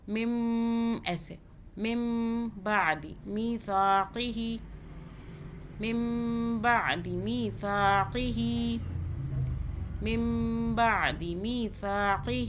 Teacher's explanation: میم ساکن کا قاعدہ آ رہا ہے، میم کے بعد با آ جائے تو میم ساکن پر کیا کرتے ہیں؟ 2 سیکنڈ کا غنہ کرتے ہیں۔